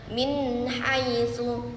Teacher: Nah, terdapat ee nun sukun bertemu dengan huruf ee bertemu dengan huruf ha yang dibacanya dengan jelas tanpa mendengung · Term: izhar halqi